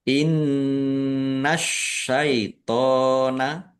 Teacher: nun tasdid dibaca ghunah atau mendengung. Ditahan biar tampak mendengung. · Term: gunah